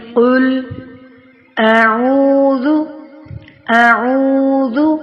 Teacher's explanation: آ کو اقصی حلق سے ادا کرتے ہوئے فوراً ہی عین کو وسطی حلق سے ادا کرنا ہے